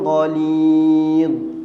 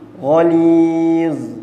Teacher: Ghalidh, sebab ghalidh lidah keluar, berhentikan bacaan tu, jangan ghaliz. Dia mati sebabkan makhraj huruf kha, makhraj huruf dha, hujung lidah kita keluar pada gigi, dua gigi ni keluar sikit je.